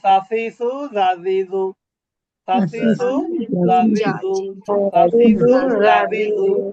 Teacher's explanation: সা এবং জাল দুইটা একই জায়গা থেকে উচ্চারিত হয়, জিহ্বার আগা উপরে দাঁতের আগা।